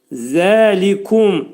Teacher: Zəlikum, zə pəltək. Demək, bu hərfin məxrəci dilimiz 2 dişin arasına girir və pəltək zəni çıxarırıq. Zəlikum, Zəlikum li incə samit, ku incə samit, mim hərfi dodaq hərfidir, şəfəvidir.